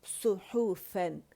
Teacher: صاد موٹا ہے، سو حو باریک ہے، صحفاً، ٹھیک ہے۔